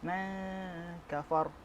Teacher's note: nun mati berjumpa dengan kaf adalah ikhfa hakiki, dibaca dengung,